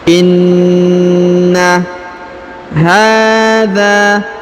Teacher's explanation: huruf na berharokat tasdid, maka kita tahan dan kita tekan ya, karena berharokat tasdid.